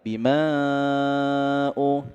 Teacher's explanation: mad bertemu dengan hamzah. Tapi ini beda kata, disebut dengan mad jaiz munfasil. Kita pakainya 4 harokat ya, atau 2 ayunan saja.